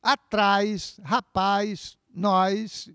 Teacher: No Rio de Janeiro, toda vez que há uma vogal tônica seguida de S no final da palavra, o carioca acrescenta um I. Então fica um ditongo naquela palavra.